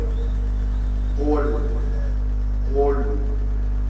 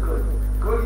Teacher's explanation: اصبحت تحولت القاف الى كا